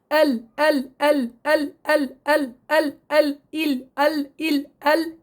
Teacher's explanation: طبعا اللام فيها مجهورة، اللام فيها جهر. نتيجة نطق اللام بصير عندي انحباس للوترين الصوتيين وانحباس كثير لهواء النفس مع اهتزاز الأوتار